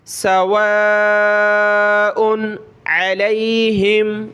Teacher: واو کے ساتھ یہ الف ہے یعنی اس کے اوپر مد ہے تو اس کو کھینچنا ہوتا ہے